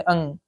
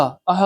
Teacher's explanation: अयोगवाह अनुस्वार तथा विसर्ग को कहा जाता है। ठीक है, अनुस्वार की ध्वनि नाक से निकलती है जबकि विसर्ग की ध्वनि कंठ से निकलती है।